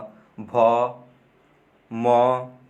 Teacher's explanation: ये होठ से बोले जाते हैं